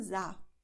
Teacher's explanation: Sa ist eher geschlossen, deswegen Mund ein bisschen zu.